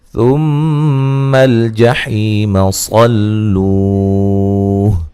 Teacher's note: ثم الجحیم صلوہ، میم مشدد پہ غنہ ضروری ہے، حی یا مدہ ہے، صاد کو موٹا ادا کریں گے، لو و مدہ ہے، صاد کو لام سے سختی سے ملائیں گے.